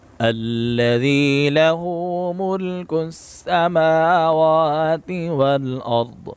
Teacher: ضاد کو بھی موٹا پڑھیں گے